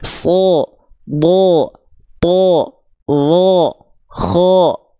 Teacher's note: Kalau huruf tebal itu ketika dia berharakat fathah dia tidak akan terdengar seperti vokal a, tapi dia akan terdengar seperti vokal o. Walaupun bukan betul-betul vokal O.